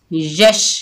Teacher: आगे क्या है, या के ऊपर जबर शीन साकिन, या को शीन के साथ मिलाएंगे यश। शीन की आवाज़ फैलती हुई महसूस होती है